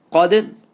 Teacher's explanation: So qaf is a full mouth letter, and dal is an empty mouth. So you have to blend it from full mouth to empty mouth, and dal you have to bounce it.